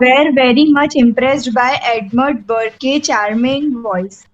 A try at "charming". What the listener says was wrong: Charming, don't say charming. R जो है ना silent है.